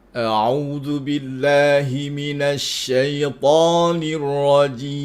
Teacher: Huruf hamzah tu dia bermula daripada pangkal halqum. Lepas tu dia pergi kepada al-jauf untuk bunyi baris atas.